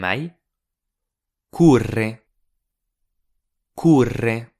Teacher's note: L'insistance est forte sur le O, qui s'entend davantage que les autres syllabes. Et à nouveau, je ne dis pas « corrèr » avec un accent sur le E.